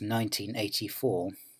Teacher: to avoid stress clash, the final stress on 19 is pushed back 1 syllable, a kind of connected speech process.